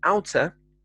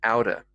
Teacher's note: with these hard t sounds we generally soften these to a softer d sound